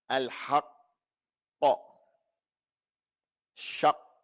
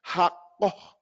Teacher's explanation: The qaf, no sound, no air.